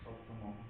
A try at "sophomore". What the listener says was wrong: Yeah, but no T.